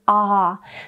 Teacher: the most open vowel of course is an ah since your mouth is all the way open there's not any tongue blocking it shouldn't be most of the